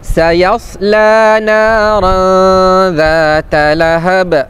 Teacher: Tanwin berjumpa dengan huruf zal hukumnya ikhfa hakiki. dengungkan bacaan dengan kadar dua harakat